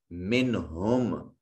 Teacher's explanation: نون ساکن کے بعد ہا حرف اظہار ہے، یہاں نون کو ظاہر کر کے پڑھیں گے